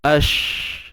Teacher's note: Dapat tak? Ni rokhawah, ash, suara mengalir. Sebab tu kena ada laluan.